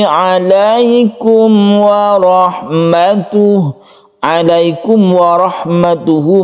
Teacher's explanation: mim mati bertemu dengan waw disebut dengan izhar syafawi, membacanya tidak berdengung.